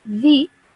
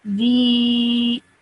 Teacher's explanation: I would stretch my sound out now for 2 seconds because of the ya madda. I would now say the.